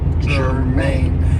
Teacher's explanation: this is 2 syllables and the stress is on the second syllable